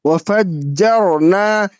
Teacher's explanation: واو زبر وا، فا جیم زبر فج، و فج، جیم و زبر جر، نون الف زبر نا، وفجرنا، یہاں پہ را ساکن سے پہلے جیم کے اوپر زبر ہے تو اس لیے را کو موٹا پڑھیں گے۔